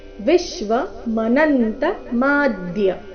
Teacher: ವಿಶ್ವನಲ್ಲಿ ವಿ ಮೇಲೆ ಆಘಾತ ಮನಂತ ನ ಮೇಲೆ ಆಘಾತ ಮದ್ಯ ಮ ದೀರ್ಘ ಬಂದು ಮೇಲೆ ದ ದ್ವಾಘಾತ ಬರಬೇಕು ಶಬ್ದದ ನಂತರ ಅನುಸ್ವಾರ